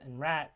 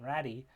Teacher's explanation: you have a stop in case of rat and you have a flap in the case or a tap in the case of ratty so a more rhodic r-like sound and ratty in most languages